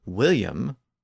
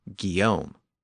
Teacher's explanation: The Normans pronounced the initial W, but the Parisians used a hard G. So we ended up with the Norman name William and the Parisian version Guillaume.